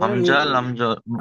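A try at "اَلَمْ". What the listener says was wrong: নয়, এটা হামজা নয়, এটা লাম। লাম মিম যাবার, লামটা আগে আছে যেহেতু, তো লাম মিম যাবার লাম। আলাম, আলাম।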